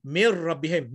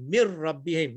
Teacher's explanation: Nun langsung hilang. Seolah-olah tu nun tak ada langsung. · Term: idgham bila gunnah